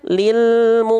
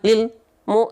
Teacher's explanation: failnya harus cari dulu ya lam itu punya sifat namanya tawassut tawassut itu artinya sedikit mengalir suaranya ya in lilmu jadinya masih jalan tanpa memantul tapi tanpa terputus · enggak ada jeda antara El dengan mu